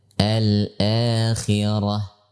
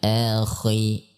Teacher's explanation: pada saat kha dalam keadaan kasrah atau sukun sebelumnya kasrah, maka sifat isti'la atau tafkhim atau tebal yang disandang oleh huruf kha ini sangat lemah sekali, sehingga kita mengucapkannya al-akhirah, bukan akhi, ya, bukan seperti itu.